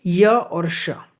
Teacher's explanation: य और श, ये क्या है आपके उच्चारण स्थान है य और श, तालु, ठीक है, तालव्य से।